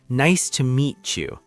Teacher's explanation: When native speakers talk at a normal speed, the sounds of the words blend together. The T at the end of meet and the Y at the beginning of U combine to make a ch sound. So meet you sounds like meet you. · The T at the end of meet and the Y at the beginning of you combine to make a ch sound.